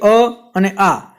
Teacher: અ અને આ એ બંને કંઠમાંથી બોલાય છે, બંને કંઠ્ય પ્રકારમાં આવે છે